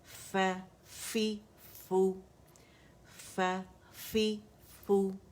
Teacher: اس کا مخرج اوپر کے دو دانتوں کے ایجز اور نچلے ہونٹ کا گیلا والا سے, جو پیٹ کہلاتا ہے, بطن کہلاتا ہے, ٹھیک ہے, وہاں پہ یہ لگے گی زبان آپ کی, اٹھے گی جو لپ ہے, اور وہاں ایجز کو نرمی سے لگے گی, ٹھیک ہے.